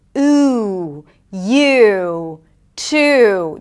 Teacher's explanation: Here, the back of the tongue goes up. It's really high up in the back. The lips round. It is a longer sound. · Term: tense U sound, tense U